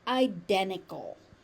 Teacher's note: So there's a T in the middle of the word and guess what happens to that? It disappears.